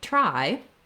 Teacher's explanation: if you're trying to say a word like try, you might be able to say it with more of a ch sound.